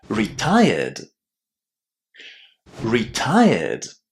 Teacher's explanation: when we attach the ed ending to retire, we don't add any extra syllables. We simply keep the original pronunciation of the verb retire and add the d sound at the end.